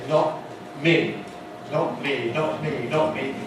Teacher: in this position many speakers of English make the T sound at the glottis rather than with the tongue tip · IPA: [ˈnɒʔ ˈmiː]